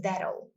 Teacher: Um Ozinho fechado e um Lzinho que a gente marca lá no céu da boca